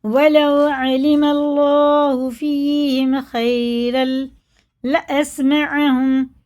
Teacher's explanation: या साकिन से पहले ज़बर है तो जल्दी पढ़ेंगे, ये हुर्फ़े लीन है